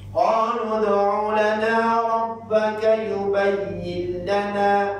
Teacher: Supaya kita gilangkan lam tu ke dalam nun. Memasukkan lam tu ke dalam nun. Tetapi tidak didengungkan. Bila guna tanpa dengung. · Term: Idgham tapi tanpa dengung